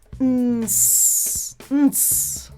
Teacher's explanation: in the N, the air's going out my nose. And in the S, my air's going out the mouth, but it also has friction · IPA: /n/ /s/